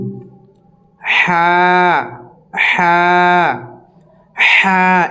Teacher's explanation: এটি একদম হালাক থেকে বের হবে